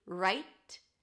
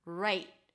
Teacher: You can release the T, right, very lightly, or hold it, right, for a held T. Just stop the breath abruptly or stop the sound, right, and that's the T, right.